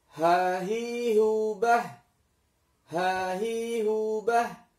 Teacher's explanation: huruf h dan a ini keluar dari tenggorokan yang paling dalam. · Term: huruf halqi